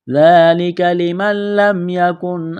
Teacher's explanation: نون کا لام میں ادغام کریں گے بغیر غنے کے